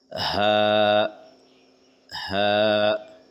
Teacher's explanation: हलक के निचले हिस्सा यानी कि सीने की तरफ से हा अदा करें। ये हरूफ हलकी है जो आखिरी हलक से अदा होता है। आखिरी हलक मतलब जो सीने के साइड में हलक होता है वहां से।